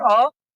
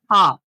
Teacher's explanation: जैसे एक शब्द होता है अ से अनार पढ़ते हैं ना अ आ नहीं अ की बात बोल रहे हैं। अ जल्दी बोला जाता है। इसको बोलने में कम समय लगता है। Compare to आ।